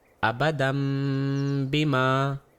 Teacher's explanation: میں نے نون کی آواز کو ناک کے راستے سے آنے والی میم کی آواز میں تبدیل کر دیا اور اپنے ہونٹوں کو ہلکا سا ملاتے ہوئے اگلے حرف کے تلفظ کے لیے 2 گنتی کے برابر میم کو کھینچا۔